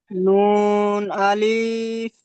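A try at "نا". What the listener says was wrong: আলিফ টান হচ্ছে, আলিফ টান হবে না। নুন, আলিফ জবর না,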